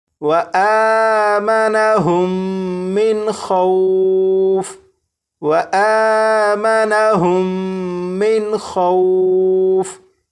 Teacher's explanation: نون ساکن کے بعد خا حروف حلقی میں سے ہے تو یہاں پر نون ساکن کو ظاہر کر کے پڑھیں گے · میم ساکن کے بعد دوسری میم ہے تو یہاں پر غنہ کر کے پڑھیں گے